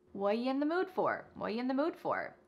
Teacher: The word are is gone, and the word you has been reduced to ya. So when we link together what and you, it's super fast.